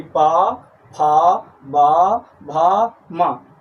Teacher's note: ऐसे वर्ण जिनका उच्चारण करने में हमें ओठों का स्पर्श करना पड़ता हो, अर्थात बिना होठ के स्पर्श किए उन वर्णों का उच्चारण नहीं हो सकता है। ऐसे वर्ण जिन्हें उच्चारित करने में हम ओठ को स्पर्श करते हैं, अर्थात दोनों होठ हमारे आपस में स्पर्श करते हैं, उनको हम ओष्ठ वर्ण कहते हैं। · जब पा कहते हैं तो हमारे दोनों ऊपर और नीचे के होठ आपस में स्पर्श करते हैं